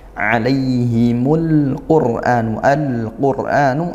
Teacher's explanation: al bertem huruf qf izhar qamarian dibaca jelas